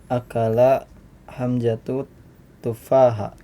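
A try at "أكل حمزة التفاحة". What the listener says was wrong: At-tufaha ada alif lamnya ya situ. Atau disambung akala hamzatut tufaha. Akala hamzatu at-tufaha. Ya, hamzatu dibaca apa? Dhammah karena sebagai fa'il. At-tufaha dibaca fathah karena sebagai maf'ulun bihi ya.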